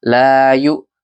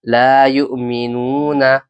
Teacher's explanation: حمزہ پر جزم ہے اس لیے یہاں پر جھٹکا دے کر پڑھنا چاہیے